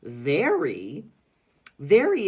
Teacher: the ER usually says er but here it says air and the y sounds like an e